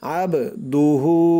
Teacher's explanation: বাটা কলকলার হরফ ধাক্কা দিয়ে পড়তে হবে, আবদুহু।